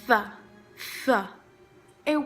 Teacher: produced by putting the tongue between the teeth and letting the air pass over the top of the tongue. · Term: sound th